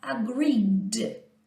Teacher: Igual agree, som de vogal, vozeia, vibra as cordas vocais, então o passado será agreed. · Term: vozeado